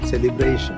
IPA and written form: ˌselɪˈbreɪʃn (Celebration)